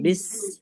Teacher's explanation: सीन में सीटी जैसी आवाज, है ना, सरसराहट